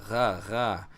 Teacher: You have the Hein, which is a Ra. You put your tongue up in the back and you vibrate against the roof of your mouth, making a Ra, almost like a G sound.